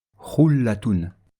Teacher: le Lam sera prononcé avec légèreté, sans mettre d'emphase, sans faire d'effort particulier de prononciation.